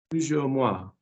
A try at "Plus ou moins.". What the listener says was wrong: Plus ou moins. Plus ou moins. Plus ou moins. Where's the je coming from? No one's saying je.